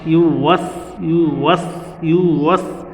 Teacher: পেশ সাধারণত রসুকারের মতো উচ্চারণ হয়, কিন্তু ইয়ার মধ্যে যখন পেশ হবে সেটা ইউ হয়ে যাবে। ওয়াও বলার সময় একটু ঠোঁট গোল হবে।